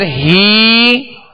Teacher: ہا کے نیچے کھڑا زیر ہے، اس کو ایک الف کی مقدار میں کھینچیں گے